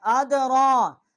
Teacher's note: را کے اوپر کھڑا زبر 1 الف جتنا آواز بلند کی ہے